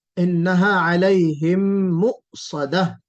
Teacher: حمزہ جھٹکے والا تو ہے لیکن قلقلے والا نہیں ہے، قلقلہ نہیں ہونا چاہیے